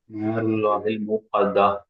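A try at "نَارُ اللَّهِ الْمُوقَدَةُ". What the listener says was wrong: மூக்கத்தா கடைசியில ஹா வரும் என்ன?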